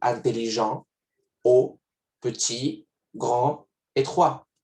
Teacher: No pronuncio ni la T ni la D, porque están al final. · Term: última letra muda